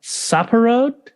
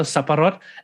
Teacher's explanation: there's like a glottal stop, and then there's like rot, and then you want to roll the R a bit